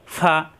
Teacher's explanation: উপরে দাঁতের আগা নিচের ঠোঁট